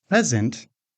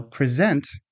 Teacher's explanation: present, with stress on the first syllable, is a gift, while present, with stress on the second syllable, means to give something